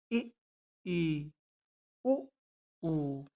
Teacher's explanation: जिन स्वरों के उच्चारण में मुख द्वार लगभग बंद रहता है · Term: संवृत